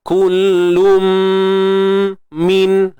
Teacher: Kullum, idgham bi gunnah, masukkan tanwin tu ke dalam mim, sempurnakan dia bunyi dengung tu.